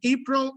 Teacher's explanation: Whenever we have the smaller O, it means this is the unstressed one. So we have April, the stressed one is the first.